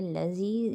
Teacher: یا پر یا مدہ بن رہا ہے، ایک الف کی مقدار کھینچیں گے۔